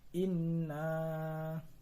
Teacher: Yang kedua yaitu mad jaiz karena ada huruf mad tabi'i bertemu dengan huruf hamzah di lain kalimat titik. Cara membacanya panjang seperti mad tabi'i 2 harokat atau 4 harokat